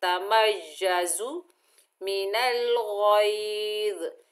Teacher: देखिए तमय्यज़ु, तमय्यज़ु, और जा को सख्ती और सीटी से अदा करेंगे